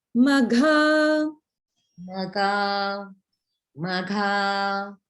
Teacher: The second time I heard the gha mahaprana.